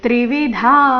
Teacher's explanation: ತ್ರಿವಿಧಾ ಧ ಮಹಾಪ್ರಾಣ ದೀರ್ಘ